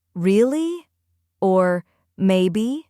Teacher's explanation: There's also something called the fall-rise tone, when your voice falls a little then rises again to show curiosity or politeness.